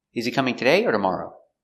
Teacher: coming today or tomorrow we stress important words in this example coming the verb is the important word so we stress coming